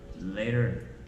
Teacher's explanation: when the T is in the middle of the word or it is in between two vowels that's the time it becomes soft